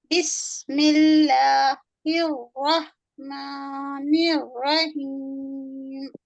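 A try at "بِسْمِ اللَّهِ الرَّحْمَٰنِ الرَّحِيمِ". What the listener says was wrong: बेटा झटका मत दीजिए, हर सुकून में झटका नहीं देना है। बिस ये है, हमस है, उसमें झटका नहीं देना है। स्पष्ट आवाज निकलती है।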